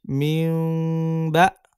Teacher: মিম নুন জের মিউ, বা হামজা জবর বা। নুন সাকিন বা তানভিনের পরে বা হরফ এসেছে, এজন্য কি করছি আমরা? একটা মিম দ্বারা পরিবর্তন করে পড়ছি।